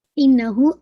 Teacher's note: इन्ना पे मोज कंप्लीट गुन्ना है, अकमल गुन्ना है, hold for 2 count, and हु को भी आपने मद्दुल सलातुल सुगरा 2 काउंट।